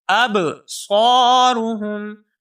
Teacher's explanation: ابصارهم میں حمزہ کو با ساکن کے ساتھ ملائیں گے، با حروف قلقلہ میں سے ہے، یہاں پر تھوڑی سی جنبش پیدا کر کے پڑھیں گے